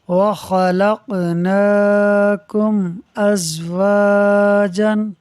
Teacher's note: میم ساکن کے بعد حمزہ حرف با اور میم کے علاوہ ہے، اظہار شفوی ہوگا، یعنی میم ساکن میں غنہ نہیں کریں گے